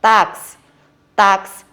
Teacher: Paroxítona, a sílaba tônica é a penúltima.